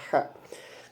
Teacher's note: huruf H dia termasuk makhraj huruf yang halqi atau tenggorokan. Kemudian dia ihtikaki, adanya gesekan.